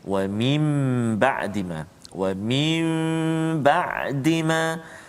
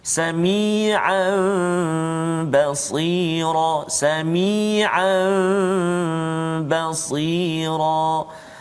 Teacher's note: apabila nun sakinah atau tanwin bertemu dengan huruf iqlab, iaitu ba, satu saja huruf iqlab, ba, maka hendaklah diiqlabkan, yakni ditukarkan kepada mim. · bacaan dia tu ba tu tukar kepada mim, dengung dengan kadar dua harakat